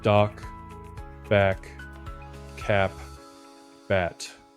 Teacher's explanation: you will feel a short break between the vowel and the consonant. · When the last sound is voiceless, P, T, K, you do stop your voice.